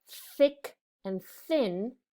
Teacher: when we say a word like thick and thin, that sound is quiet. We don't feel that vibration in our throat or on our tongue.